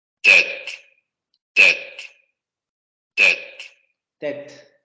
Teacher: Vean cómo la pronunciación de la T es excesivamente nítida como en español.